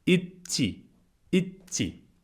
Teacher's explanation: It's like a little bit of a pause in the d, in the d and t sounds.